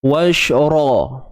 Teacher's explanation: Huruf ra kena tebalkan sebutan dia sebab dia baris atas.